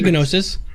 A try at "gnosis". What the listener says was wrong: Right, but you don't pronounce the G. You're not supposed to. It's not pronounced gnosis. It's gnosis.